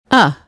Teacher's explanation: Your tongue is very low and flat. The tip of your tongue touches the back of your bottom teeth.